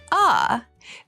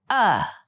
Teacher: a and uh are both back vowels and so are pronounced in the back part of your mouth